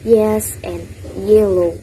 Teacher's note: palatal sounds formed by the middle of the tongue up against the hard palate